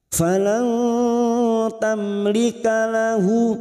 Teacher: mim sukun bertemu lam idhar safawi, mim sukun dibaca jelas tanpa mendengung